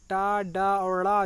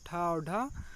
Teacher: टा, डा और ड़ा जो है 1, 3, 5 ये अल्पप्राण है और ठा और ढा ये महाप्राण है।